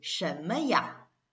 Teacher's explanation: For example, 什么, you don't read it like a 什么, you don't pause in between m and a. So you will just say 什么呀?